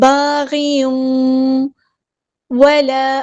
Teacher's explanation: تنوین کی آواز کو واو میں مرج کر دیں گے، ادغام مع الغنہ ہو رہا ہے. باغی ولا، الف مد آیا تو مد اصلی کریں گے.